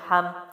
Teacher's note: ہا جو ہے وہ حلق سے ہے، میم ہونٹوں کی جانب سے اور میم پہ پھر جزم ہے تو ہا کی زبر ہی کے ساتھ میم پڑھا جائے گا.